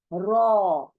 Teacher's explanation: उर्दू में इसको पुर पढ़ते हैं, पुर यानी मोटा करके पढ़ा जाने वाला लेटर है ये, रॉ। ओ देखिए, ओ का साउंड आना है